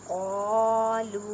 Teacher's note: قالوا واو ساکن سے پہلے پیش ہے، واو مدہ کا قاعدہ کریں اور چھوٹی مد ہے 4 الف کی مقدار میں کھینچ کر پڑھیں۔